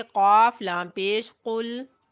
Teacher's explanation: قاف کو موٹا پڑھتے ہوئے لام ساکن کے ساتھ ملائیں گے